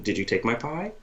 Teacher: rising the tone at the end of a yes or no question